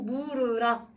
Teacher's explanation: 미음에다가 으가 왔는데 원순모음화 적용해줘야 돼